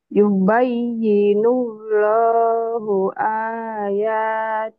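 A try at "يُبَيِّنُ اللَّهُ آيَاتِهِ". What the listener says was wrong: Yubayyinullahu ayatihi. Hinya panjang betul. Tapi coba dihentikan. Karena Iqra 5 udah baca Quran. Kalau baca Quran, kalau ujung-ujung itu jadi dihentikan, jadi sukun. Kecuali dua patah. Jadi panjangnya hilang ya kalau dihentikan.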